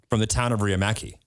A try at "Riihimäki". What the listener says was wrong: Yeah, but it's not pronounced like that because there's a little accent. There's the 2 dots above the A in like MAKI at the end of my last name.